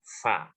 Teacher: bibir bawah bagian dalam bertemu ujung gigi atas